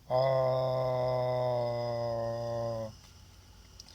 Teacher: Afterward, he focused on releasing the jaw and hearing the most open back vowel sound in spoken English